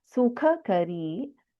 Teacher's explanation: In Sukhakari, we have first Kha, which is Mahaprana. Then we have Alpaprana in Kari.